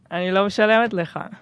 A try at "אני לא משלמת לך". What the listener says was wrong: That's good, but too happy.